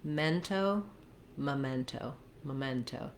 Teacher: We have second syllable stress in memento, and we have the eh vowel, like in men or red. So watch out that your E's don't sound too tense.